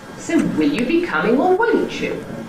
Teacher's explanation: The pitch of the successive accented syllables drops down again and establishes a new starting point for the rising position. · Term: emphatic version